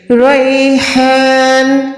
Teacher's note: رو کے اوپر زبر ہے، رو موٹی پڑھی جائے گی